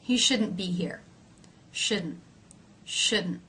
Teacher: you'll more often hear shouldn't without that release of the T so the t is pronounced as a stop consonant